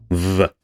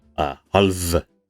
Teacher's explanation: this is like an F but voiced. So you make it with your lips and it is voiced.